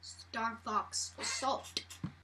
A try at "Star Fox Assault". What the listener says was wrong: Why are you pronouncing everything so hard? Star Fox Assault. Spit everywhere.